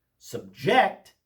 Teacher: Subject with the accent on the second syllable, subject is a verb meaning to impose something or make someone endure something.